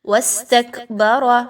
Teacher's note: را پر زبر ہے، را کو پر پڑھا جائے گا۔